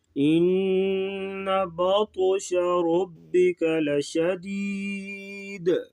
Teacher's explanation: ان پہ غنہ کریں گے، با تو کو پور بھی پڑھیں گے اور موٹے روف سے موٹا کریں گے اور یہاں پر قلقلہ بھی کریں گے اور را کو پور پڑھیں گے. لشدید وقفاً دال ساکن ہوگی تو قلقلہ ہوگا